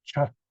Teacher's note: This is chakka, chakka. So there is this plosive, this burst of air, cha.